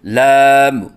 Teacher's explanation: آخر میں میم کے اوپر قلقلہ کرنا، جیسے لام، یہ غلط ہے۔